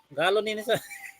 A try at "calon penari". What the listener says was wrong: G-nya bukan G, galon, C, calon.